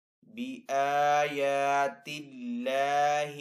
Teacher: اللہ عز و جل کے نام کو یہاں پہ باریک پڑھیں گے کیونکہ پہلے والے حرف کے نیچے زیر ہے